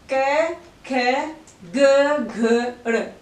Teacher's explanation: क, ख जब हमने बोला तो हमारी स्वर तंत्रियां झंकृत नहीं हो रही है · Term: अघोष